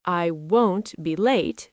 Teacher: >> It sounds like the word want sometimes, but the vowel is different. Won't has a long o sound like go